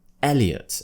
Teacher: we slightly spread the lips not as much as E but we do slightly spread the lips and the tongue will sit near the front in the middle of the mouth